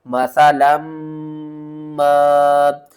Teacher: لام کو میم سے ملائیں گے، یہاں پر بھی ادغام ہو رہا ہے غنے کے ساتھ